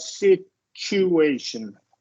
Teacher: rule the rule is here this should be t plus u in the middle of a word the T becomes a CH sound and the U mustn't be stressed